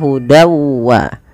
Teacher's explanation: Fal wa hud wa di sini masukkanlah bunyi tanwin pada lafal dan awalnya dan karena ia bertemu wau kita masukkan tanwinnya kepada huruf wau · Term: idgham bighunah